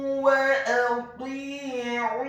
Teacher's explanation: Huruf alifnya dibaca tipis, fathah satu harokat.